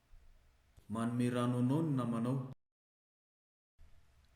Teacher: on the final syllable because of this you can see that the f zero starts low throughout the sentence until that final stressed syllable where pitch rises sharply this is the fcr contour that i've labeled l plus h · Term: l plus h star, L plus H star